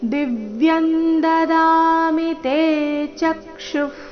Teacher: ದಿವ್ಯನ್ ದಿ ಮೇಲೆ ಆಘಾತ